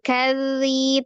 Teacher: Mukadzi, ada zal tasdid ya, berarti zalnya ada double ya. Tidak diputus karena huruf zal itu sifatnya adalah roghah, mengalir ya. Jadi dialirkan. · tidak ditebalkan karena huruf zal adalah termasuk huruf yang tipis ya